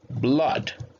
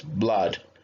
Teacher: Blood is incorrect. You have to say blood with a ah. This is an open ah.